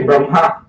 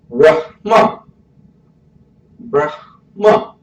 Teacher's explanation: It ends with ma, not ha. The ha comes before, but this is hard to say.